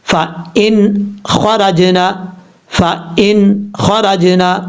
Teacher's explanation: خا حروف مستعلیہ میں سے پر پڑھا جائے گا۔ را جیم زبر رج، نون زبر نا، جیم حروف قلقلہ میں سے ہے، حروف قلقلہ جب ساکن ہوں ان میں قلقلہ ہوتا ہے، تو یہاں جیم ساکن ہے اس لیے یہاں پہ قلقلہ کریں گے۔